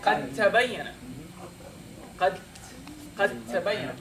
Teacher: So because the two are too close to each other, you dropped one of them. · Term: idgham